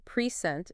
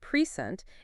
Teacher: If we stress the first syllable, present, it's a noun meaning a gift. But if we stress the second syllable, present, it's a verb meaning to give something.